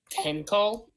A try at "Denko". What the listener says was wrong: Denko with a D. The H is silent.